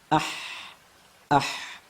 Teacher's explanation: ah ah oh ternyata dijumpai suara yang mengalir ya Sehingga kesimpulannya huruf ha antara udara dan suaranya sama-sama mengalir tidak bisa dipisahkan · huruf H antara udara dan suaranya sama-sama mengalir, tidak bisa dipisahkan. Karena sebagian huruf ada kalanya kita bisa memisah antara aliran udara dengan aliran suara. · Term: rakhawah